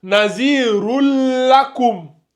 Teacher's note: c'est le la qui prend. Donc, le noun, il a disparu.